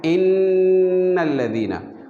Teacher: नून मुशद्दद के गुन्ना में ज़ुबान जो है वो नून के मखरज से वाज़ेह तौर पर लगती है